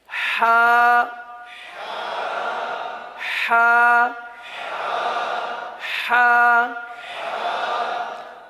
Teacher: حلق کا درمیان، وسط حلق ہے